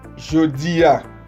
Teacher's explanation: la Y en creol es una Y sonora, en donde nos tiene que vibrar la caja torácica